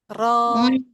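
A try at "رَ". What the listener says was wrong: Ya apa nekannya jangan terlalu kenceng ke bagian apa namanya si mahrotnya. Jadi sentuh lembut. Nah, posisinya udah stay setengah itu ya, setengah lingkaran ya, bukan setengah lingkaran ya, maksudnya setengah bulatan mulut yang A tadinya tapi udah setengahnya nih.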